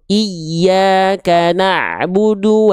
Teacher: Untuk huruf ya bertasydid namanya adalah nabroh atau naber, penekanan yang lebih kuat.